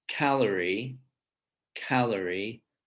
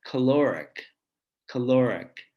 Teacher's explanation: this change in the suprasegmentals of which syllable is stressed changes the vowels of the A and the O letters.